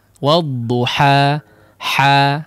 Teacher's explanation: Nah, lepas ha suara murni.